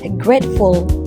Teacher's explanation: the unexpected insertion of the vowel U between the consonant F and L is an example of epenthesis